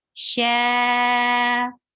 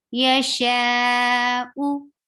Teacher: 4 haraka long, because after mad you find hamza. Yasha'u, circle your lips for dhamma.